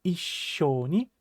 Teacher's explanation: Please make sure that you're putting an adequate pause between the single E sound and the sh sound